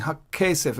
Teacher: Because I'm saying Hakkesef. I'm doubling the K sound. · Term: strong Dagesh